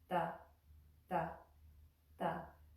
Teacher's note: You're going to put your tongue on the back of your front teeth and draw it back to make the ta, ta sound.